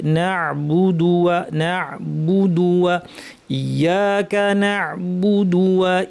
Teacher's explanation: আচ্ছা, এখানে আরেকটা ভুল আমাদের হয়, সেটা হচ্ছে বুদু ওয়া। বু বলার সময় আমরা ঠোঁট গোল করি না, ফলে বুটা বো শোনা যায়, ওকারের মতো বাংলা।